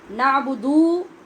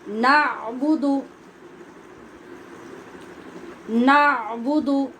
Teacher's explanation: نعبدو یہ نہیں پڑھیں گے، دال کے اوپر صرف پیش ہے، تو آدھے الف کے برابر تیزی سے انگلی بند کرنے اور کھولنے میں جو وقت لگے گا اس کے مطابق ادا کریں گے.